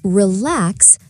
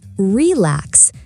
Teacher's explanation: The stress is on the second syllable. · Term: word stress